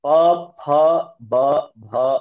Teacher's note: ಬಾಯಿ ಮುಚ್ಚಿ ಎರಡು ತುಟಿ ಒಂದಕ್ಕೊಂದು ಟಚ್ ಮಾಡ್ತೀವಿ ವಿ close ಅವರ್ mouth and touch both the lips ಬೈ each